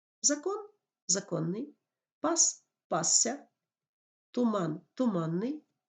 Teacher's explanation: приголосні в деяких словах вимовляється довше ніж звичайна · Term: подовжених приголосних